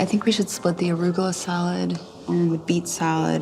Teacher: her intonation is quite flat